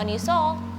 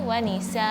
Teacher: Ketika membaca wanisa jangan waniso, tapi wanisa dikeluarin anginnya karena sin bukan huruf tebal ya, jadi huruf tipis. Jadi jelaskan wanisa, bibirnya tidak digerakkan kalau ada huruf tebal ataupun tidak ngelembung ya.